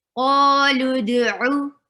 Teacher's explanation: ayn should be very clearly pronounced from your throat. Qalud'u. La will be short.